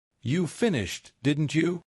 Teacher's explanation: Falling tone equals I expect yes.